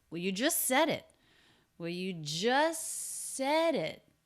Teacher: stress on just stress on said and then a stop t ending that thought group